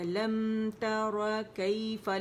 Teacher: میم کی آواز کو شارٹ بھی نہیں کرنا، پورا 1 کاؤنٹ دینا تاکہ اس کا نیچرل غنہ جو ہے صفت جس کی صفت لازم ادا ہو جائے.